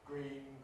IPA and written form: griːn (green)